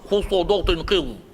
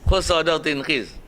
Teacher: semua huruf tafkhim, semua mesti tebal mulut, semua mesti suara penuh dalam mulut